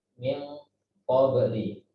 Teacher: Jadi nunnya, pendengungnya diikhfakan dan ditebalkan.